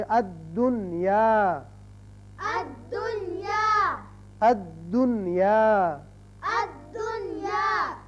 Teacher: یہاں یاد رکھیے کہ نون کا اظہار ہوگا، اسی قاعدے کا نام اظہار مطلق ہے